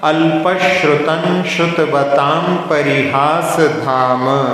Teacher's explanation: श्रुत जो शब्द बनता है उसमें तालव्य श होता है, तो इसलिए शक्कर वाला सा का उच्चारण अल्पश्रुतं श्रुतवताम परिहास धाम।